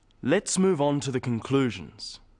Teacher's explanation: stressing conclusions because it's the key word in this sentence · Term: sentence stress